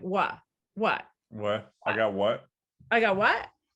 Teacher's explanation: and so you've deleted the t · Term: consonant deletion